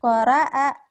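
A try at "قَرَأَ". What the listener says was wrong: bukan koraa, koroa, enak aja koraa, koroa, koroa, ro, ronya,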